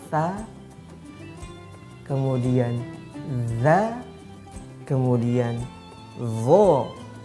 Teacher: Cara penyebutan ketiga huruf yang berada di ujung lisan bertemu dengan 2 gigi seri yang atas. Nah, ketiga huruf ini pelafalannya boleh sedikit ditampakkan lisannya ke depan.